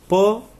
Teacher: प अल्प प्राण ध्वनि है